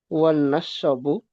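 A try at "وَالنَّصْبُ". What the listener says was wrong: Sotnya sukun. Wan nasbu.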